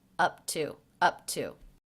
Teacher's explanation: the word to usually has the schwa sound in it and instead I left in the vowel ooh